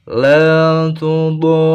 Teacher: Kemudian ada ro yang bertasdid, maka do panjang 6 harokat, kemudian ditekan kepada huruf ro yang bertasdid. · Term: mad lazim musaqal kilmi